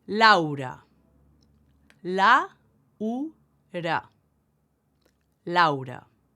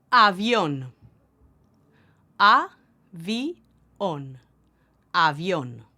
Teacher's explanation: Also, we don't diphthongize like you do in English when two vowels come together